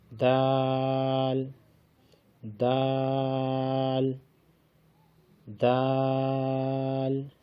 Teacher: زبان کی نوک جب اوپر والے دونوں دانتوں کی جڑ سے لگے تو اس سے دال ادا ہوتا ہے